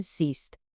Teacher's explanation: la E de sehen, ver, se alarga transformándose en siehst